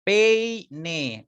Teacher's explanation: la E se abre más que la I